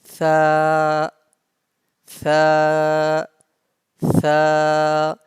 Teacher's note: Tha, tha, tha, and the sa pronounced from the top of the tongue and the inner edge of your upper teeth.